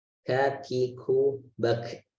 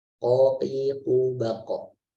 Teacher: Tidak seperti kaf yang tadi ada sedikit nafas keluar, tapi ini kalau qaf tidak ada nafas yang keluar.